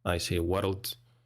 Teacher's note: My accent, I'm from Scotland, and we pronounce world with 2 syllables. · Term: a Scottish thing